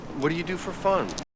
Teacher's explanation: Okay, so the strongest syllable there is fun.